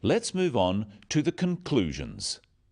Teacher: stressing conclusions because it's the key word in the sentence the other words stressed are the key words for understanding let's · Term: sentence stress